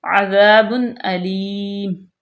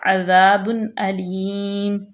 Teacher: تنوین کے بعد حمزہ آ گیا حروف اظہار میں سے تو یہاں پہ ظاہر کریں گے، بالکل بھی غنہ نہیں کریں گے، عذاب علیم، اور یہاں پہ وقف بالاسکان ہوگا، یہاں پہ تو جو ہے وہ دو پیش جو ہیں وہ ختم ہو جائیں گی۔